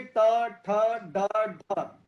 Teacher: उसके बाद मूर्धन्य ध्वनिया, मूर्धन्य मतलब मूर्धा का अर्थ होता है छत। जब हमारी जीभ छत को टकराती है, छत का हमारे मुंह के अंदर की छत, ये ऊपर अंदर की तरफ का हिस्सा होता है, तब मूर्धन्य ध्वनियां निकलती हैं।